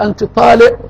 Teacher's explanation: عندهم القاف تنطق همزه